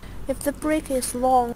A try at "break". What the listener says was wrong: It's break again, not brick. Break.